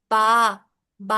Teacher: हमारे दोनों होठों के मिलने से अदा हुआ बा